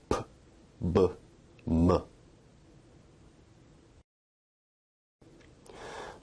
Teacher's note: Bilabial sounds are produced with both lips, like p, b, m.